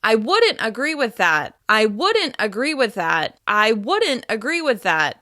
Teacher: By stressing wouldn't, which has a more conditional feeling, you suggest that there's still room to negotiate and discuss further.